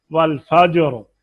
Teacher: रा भी साकिन, जीम भी साकिन, तो फा की जबर की वजह से इसको पुर पढ़ेंगे